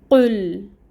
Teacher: اپنے ہونٹوں کو بالکل گول کر کے پیش کی حرکت ادا کریں گے اور ایک کاؤنٹ پڑھیں گے، ایک حرکت کے برابر۔ پھر لام ساکن ہے، قاف کو لام کے ساتھ ملائیں گے، قل۔